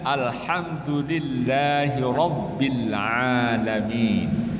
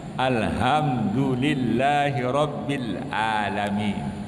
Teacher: Huruf ain ditukar huruf a.